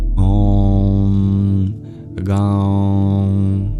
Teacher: the dot below the M means that we bring the vibration of the sound into the nasal cavity.